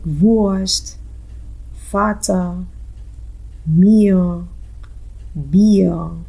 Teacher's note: The R sound after the vowel is pronounced as O.